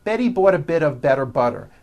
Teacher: notice that you do not hear any T sounds TT they're only D's d d which are voiced go over